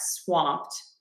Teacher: we do pronounce the W in that, swamped. T for that ED.